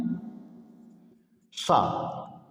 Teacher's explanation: ये तालु से बोला जाता है। तालु से बोलने की वजह से ही इसका नाम पड़ा है तालब सा।